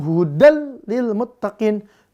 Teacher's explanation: hudannya dimasukkan ke lam maka bunyinya jadi hudal tanpa dengung jadi baca Enggak boleh hudil salah yaun hudil Muttaqin ya di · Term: Bila gunah